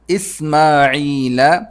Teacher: اسماعیل، حمزہ کو سین سے ملانا ہے. سین نکالنے کا طریقہ یہ ہے کہ دانت ملا کر سیٹی کے ساتھ نکالیں.